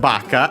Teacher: Accent on the first syllable on the ba.